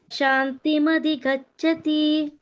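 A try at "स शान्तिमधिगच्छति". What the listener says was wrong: ಸಶಾಂತಿಮಧಿಗಚ್ಚತಿ ಸಾ ಇದೆ ಮಾತಾಜಿ.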